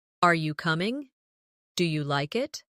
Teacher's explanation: In English, our voice usually rises at the end of a yes or no question.